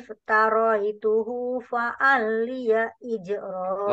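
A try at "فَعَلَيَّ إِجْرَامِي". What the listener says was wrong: Wa'alayya. Wa'alayya. Lamnya tidak dobel.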